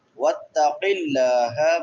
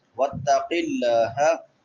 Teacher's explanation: قاف موٹا پڑا جائے گا، لفظ اللہ باریک ہوگا کیونکہ لفظ اللہ سے پہلے زیر ہے